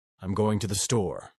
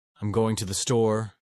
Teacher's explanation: The uptalk At the end of sentences, Californians often raise their tone at the end of sentences, making everything sound like a question.